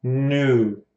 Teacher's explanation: Não é nu direto. É tipo indo, fechando progressivamente.